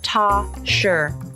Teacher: When you link a word that ends in s with a word that begins with a ya consonant, sometimes an entirely new sound is created, the sh sound. So, the phrase toss your becomes toss your. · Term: assimilation